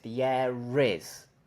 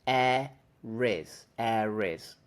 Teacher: there's an R sound AIS AIS the r is there because we're connecting the word a that ends in a vowel sound to the word is that begins with a vowel sound you can't connect two vowels you need a consonant so we